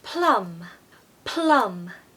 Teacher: I call this the umbrella U because the first letter in that word is the exact sound that we want. Very short and made sort of in the midsection of your mouth, not right at the back like with the short A. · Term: short U